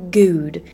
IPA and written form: guːd (good)